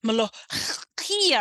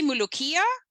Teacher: It's closer to mulukia when you say mulukia and you just kind of skip the kha, make it a ka, substitute it with something that an Anglophone ear can hear